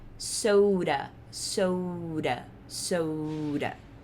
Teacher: Daí a gente tem aqui mais uma palavra com exemplo de D, ele tá entre dois sons de vogal, ou seja, a gente vai pronunciar isso com som de R